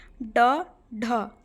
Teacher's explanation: जीभ की नोक उलटकर कठोर तालु से टकराकर आगे की ओर फेंकी जाने से उत्क्षिप्त ध्वनियाँ उच्चारित होती हैं